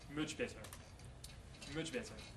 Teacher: this is also voicing um with much better much better here the following B the B sound which is voiced influences the previous sound the preceding sound the T sound changes to a j sound